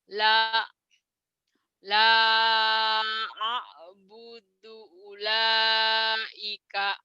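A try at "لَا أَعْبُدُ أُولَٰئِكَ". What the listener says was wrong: Enggak, ini maksudnya bacanya ini dihentikan la a'bud. Ini ulaika gitu, jangan digabungin ya. La a'bud ini mad jaiz munfasil, ulaika ini mad wajib muttasil.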